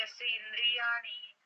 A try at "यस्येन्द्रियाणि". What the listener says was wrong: अलग अलग नहीं करना है उसको, एक साथ बोलना, यस्येन्द्रियाणि।